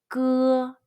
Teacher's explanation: The Chinese 歌 sound is voiceless. It's different from the G in the English word God, which is voiced.